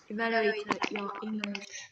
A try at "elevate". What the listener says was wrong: He said evaluate. It's not evaluate, it's elevate. So she actually here read wrong, right? It's not a error of pronunciation. She did read wrong here. So she made a mistakes here, elevate and proficiency.